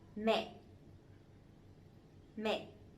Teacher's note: the dấu nặng, the strong tone, so it has to be down and it has to be stronger a little bit